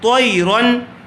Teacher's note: اس کو رن غنہ کر کے نہیں پڑھیں گے بلکہ بغیر غننے کے پڑھیں گے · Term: اظہار